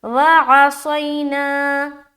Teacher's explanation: سوئی، وعصینا، نا میں الف مدہ کریں گے، یہاں پر سوئی جو ہے نا، صاد یا زبر سوئی، یہاں پر یا لین ہو رہا، نرمی کے ساتھ ادا کریں گے جلد، اور نا میں کھینچیں گے، الف مدہ کر رہے، وعصینا۔